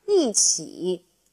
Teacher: Now, please note the tone change for 一. 起 is third tone, so 一 changes from first tone to fourth tone.